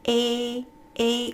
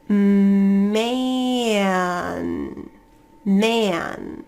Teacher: your tongue is going to be stretched a little bit it's a little bit more tense a a your jaws a little bit wider the back of